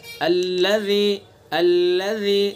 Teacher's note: ज़ाल को बिल्कुल नरमी से पढ़ेंगे, सख्ती नहीं होनी चाहिए ज़रा भी। अगर ज़रा भी सख्ती हो गई तो ज़ा बन जाएगा, अल्लज़ी हो जाएगा।